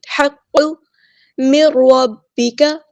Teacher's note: زبان کی جڑ کو اوپر تالو کے قریب نرم حصے کو لگائیں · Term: قاف